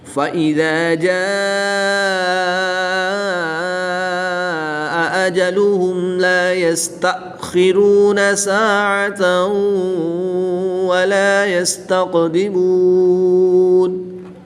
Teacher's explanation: خا، قاف حرف مستعلیہ میں سے ہے، ان کو پر یعنی موٹا پڑھیں گے۔